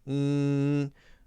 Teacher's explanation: when it's closed you'll notice that all of the air is coming out of your nose